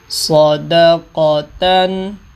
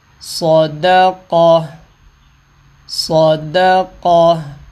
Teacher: اب یہ گولتا ہے، وقف کر رہے ہیں اس کے اوپر، تو گولتا کو ساکن کر کے ہا بنا دیں گے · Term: ہا ساکن